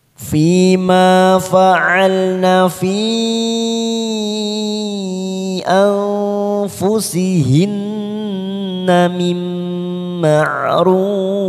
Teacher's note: huruf nun yang bertasdid tadi, namanya bacaan gunnah. Kita tekan 3 ketuk. Hinna mim, ada nun sukun bertemu mim, namanya idgham bi gunnah.